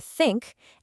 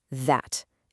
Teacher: There's a soft sound like in the word think. And then there's a buzzy sound like in the word that.